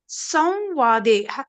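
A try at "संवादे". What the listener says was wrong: It is not it is not it should be wa. Samvade. Wa. That Anuswar sound should be Anunasik wa. Samvade.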